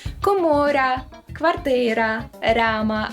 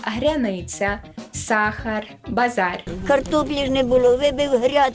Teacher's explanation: у багатьох лівобережних говірках зокрема полтавських можна натрапити на пом'якшення звука р